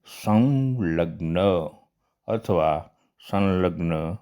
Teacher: અનુસ્વાર પછી જો લ વર્ણ આવતો હોય તો અનુસ્વારને બદલે આપણે અનુનાસિક લ નો ઉપયોગ કરીશું કે સંલગ્ન તો અનુસ્વાર પછી લ છે તો અનુસ્વાર નો અનુનાસિક